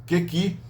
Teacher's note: tem uma consoante que é articulada no velo, K, G, seguida de duas vogais dianteiras, E, I. Isso causa um conflito articulatório que é resolvido pela palatalização.